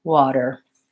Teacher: We use a strong back American R